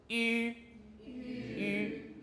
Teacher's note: Now we come to the front rounded. So the lips are rounded, the tongue's at the front.